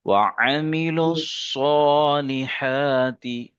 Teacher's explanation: وعملوا صاد کو موٹا پڑھیں گے، ہا کو ادا کریں گے